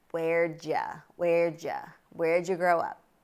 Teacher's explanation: did you becomes ja ja